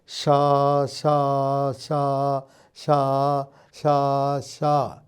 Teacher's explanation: നാവിൻറെ മുൻഭാഗം താലുവിനോട് വളരെ അടുക്കൽ നിന്നിട്ട് എത്തിയിട്ട് ഇടയ്ക്ക് ഒരു വിടവ് വരുന്നു നാവിൻറെ മുൻഭാഗത്തിനും വായുടെ മേൽ തട്ടിനും ഇടയ്ക്ക് ഒരു വിടവ് ആ വിടവിൽ കൂടി · നാവിൻറെ തുമ്പിന് ഒരു ജോലിയുമില്ല നാവിൻറെ തുമ്പ് കീഴോട്ടേക്ക് ആണ് ഇറങ്ങി നിൽക്കുകയാണ് ചെയ്യുന്നത് ഇനി നാവിൻറെ തുമ്പ് മുകളിലേക്ക് വളയണം എന്ന് വെക്കുക നാവിൻറെ തുമ്പ് മുകളിലേക്ക് വളഞ്ഞു